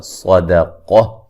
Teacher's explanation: صاد کو موٹا ادا کریں گے، قاف کو موٹا ادا کریں گے، درمیان میں دال کو باریک پڑھنا ہے اور وقفاً گول تا کو ہائے ساکنہ میں تبدیل کر دیں گے.